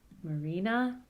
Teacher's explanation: so the low is on the penultimate syllable, but the high is still at the end. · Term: penultimate stress